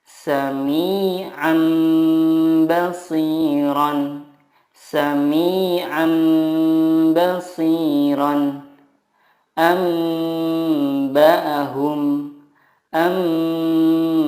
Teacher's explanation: Iqlab adalah nun sukun atau tanwin bertemu dengan huruf ba. Cara membacanya mengganti nun sukun dengan mim sukun dan disertai gunnah 2-3 harokat.